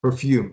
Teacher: We're going to stress the second syllable.